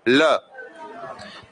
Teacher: जो हमारी जो शवास वायु है वह जीभ के बाजू से निकल रही है · दोनों पार्श्वों से हवा निकलने के कारण जो हमारी श्वास वायु है वह दोनों जीभ के बगलों से आती है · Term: पार्श्विक व्यंजन